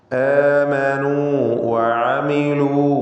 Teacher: ആമനൂ വഅമിലൂ, അവിടെ ആമനൂ എന്ന ദീർഘാക്ഷരമായ വാവ്, ശേഷം ഹറക്കത്ത് നൽകി ഉച്ചരിക്കുന്ന വാവ്, രണ്ടിൻ്റെയും മഖ്റജ് വേറെ വേറെയാണ്. ദീർഘാക്ഷരമായ ഹർഫുൽ മദ്ദാകുമ്പോൾ അതിൻ്റെ മഖ്റജ് ജൗഫാണ്. എന്നാൽ ഹറക്കത്ത് നൽകി ഉച്ചരിക്കുന്ന വാവ് ഷഫത്താനിയാണ്.